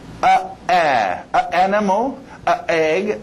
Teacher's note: Vogais também vão se chocar. A animal, A egg, tem um choque aí.